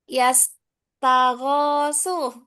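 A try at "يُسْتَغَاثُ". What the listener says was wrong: dhamma awal. Nah, yustaghasu.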